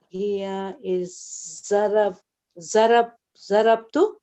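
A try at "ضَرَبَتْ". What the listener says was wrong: Zarabat. But ta has a sukun.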